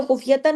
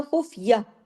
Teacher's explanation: اگر ملائیں گے تو خفیتن ہوگا لیکن رکیں گے تو خفیہ